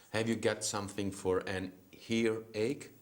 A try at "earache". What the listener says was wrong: Earache. There's no H before ear and there's no H before ache. So it's earache, earache.